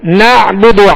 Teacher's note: نعبد عین کو وسط حلق سے ادا کریں گے. نعبد با پر پیش دال پر پیش دونوں کو بغیر کھینچے بغیر جھٹکا دیے معروف پڑھیں گے.